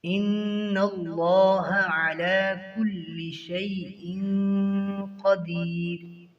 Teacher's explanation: ان اللہ لفظ اللہ کو موٹا پڑھیں گے